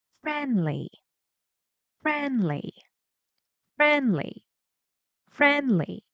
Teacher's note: the stressed syllable is friend which has the air sound of unit 3 you know friendly